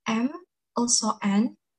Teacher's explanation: m also n which have air flowing through the nose